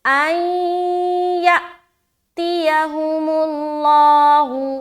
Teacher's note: تو یہاں پر ہم ادغام ناقص یعنی کہ غنے کے ساتھ ادغام کریں گے